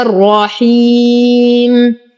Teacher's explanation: نقف على الميم بالسكون العارض وقبله حرف مد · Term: عارض للسكون